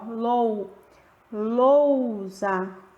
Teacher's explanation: o U, ele aparece realmente com menos força, bem menos